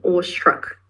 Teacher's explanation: So there is this sh sound that we get because of this S and the combination of S and T and R.